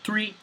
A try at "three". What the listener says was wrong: It's not an F.